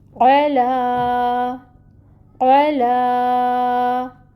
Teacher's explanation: لام کے اوپر کھڑی زبر ہے، 2 حرکت کے برابر کھینچیں گے